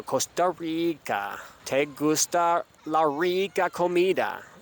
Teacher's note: The R's in Costa Rica and in San Jose are regular R's in English.